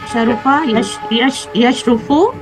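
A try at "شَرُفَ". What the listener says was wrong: Benar, teruskan.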